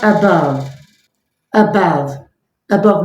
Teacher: the schwa sound. That is the central vowel sound